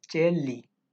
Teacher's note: N sound changes to L sound, and then you add li, chelli.